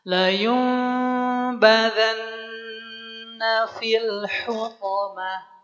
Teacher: Caranya si nun sukunnya dirubah bunyinya menjadi mim. Dan jangan lupa masukkan udaranya ke rongga hidung karena dia dengung. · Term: Iqlab